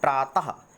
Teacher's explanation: विसर्ग जो ध्वनि देता है वो देता है आपका हा के लिए